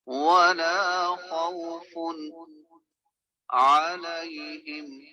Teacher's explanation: ولا خوف علیہم میں نون ساکن و تنوین کا اصول اظہار اپلائی ہو رہا ہے کیونکہ تنوین کے بعد عین آ رہا ہے